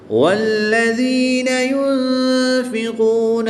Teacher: نون ساکن کے بعد فا حروف اخفا میں سے ہے تو یہاں پر ہم اخفا کریں گے یعنی غنہ زمانی کر کے پڑھیں گے.